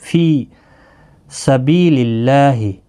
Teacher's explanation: فی یا مدہ ہے، بی یا مدہ ہے، دونوں کو ایک ایک الف کی مقدار کے برابر کھینچ کر پڑھیں گے